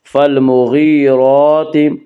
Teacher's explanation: فالمغیرات، یا مدہ وہ یا جو ساکن ہو، اس سے پہلے زیر ہو، یا مدہ کو ایک الف کے برابر کھینچ کر پڑھیں گے